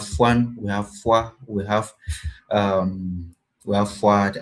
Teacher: we have the labialized form of F